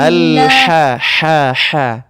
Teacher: ha yang pedas ini itu cara ngucapinnya butuh effort dikit, butuh tenaga lebih gitu daripada H biasa